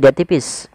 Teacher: ra sukun didahului dengan huruf kasrah, maka dia dibaca dengan ra tarqiq, ra yang tipis, tidak boleh ditebalkan